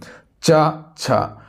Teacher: च वर्ग का जो उच्चारण होता है वो तालव्य से होता है, यानी कि तालु से होता है